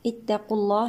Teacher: لام لفظ الجلالة هنا مفخم